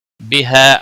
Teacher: الف مدہ ہے، 1 الف کے برابر کھینچ کر پڑھیں گے